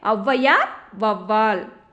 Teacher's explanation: ஔகாரம் சொல்லின் முதலில் வரும்போது தனக்குரிய 2 மாத்திரை அளவிலிருந்து குறைந்து 1 மாத்திரை அளவில் ஒலிக்கிறது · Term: ஔகார குறுக்கம்